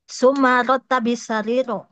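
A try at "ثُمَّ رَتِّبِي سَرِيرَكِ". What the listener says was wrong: Summa rattibi bi ratti gitu. Ratti bukan ratta.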